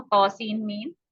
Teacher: हालांकि ये हरूफ मुक़त्तआत एक लफ्ज की सूरत में लिखे जाते हैं, लेकिन इसके बावजूद हम हर्फ के आखिर में आने वाले नून साकिना को हर्फ मीम में मिला देते हैं